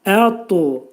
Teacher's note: sükunlu ta hərfinin məxrəci dil yuxarı damağa doğru qaldırılaraq damağa dəyər və dəyməz vəziyyətdə qalın ta səsini çıxarırıq. Ta hərfi qütbüzət hərflər qrupuna aid olduğuna görə, onu da bir vurğulu şəkildə deyirik.